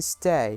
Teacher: The glide begins in the position for /e/ moving up and slightly back towards /ɪ/ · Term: /eɪ/ diphthong, A diphthong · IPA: /steɪ/